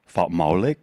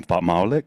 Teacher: I'm going to add this word, this piece that's called fa. The apostrophe is a glottal stop. You stop your voice.